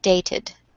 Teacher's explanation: there is a schwa between the T and the D. Yes, it looks like a mix of A and E in the same vowel.